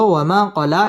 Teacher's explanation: মা মধ্যে তবাই একালিফ টেনে পড়তে হবে